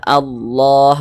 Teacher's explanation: Di sini lafaz Allah dibaca tebal, dibaca tabkhim. Jadi kalau kita membaca Al-Quran berjumpa dengan lafaz Allah, sebelum lafaz Allah ini ada harokat fathah.